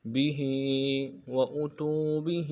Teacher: بِهِ میں ہا کے نیچے کھڑی زیر ہے، ایک الف نرمی کھینچیں گے